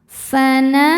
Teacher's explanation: Nah, hukum tajwidnya adalah mad tabi'i dhahiri, sebab ada alif yang sebelumnya berharokat fathah. Cara bacanya dipanjangkan 2 harokat.